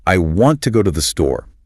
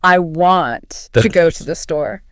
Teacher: The stress words are want, go, store. They get all the vocal energy.